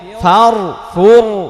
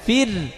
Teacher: ফির পাতলা হবে র সাকিন ডাইনে জের যদি পেশ বা জবর থাকতো তাহলে মোটা হইতো ফার ফুর মোটা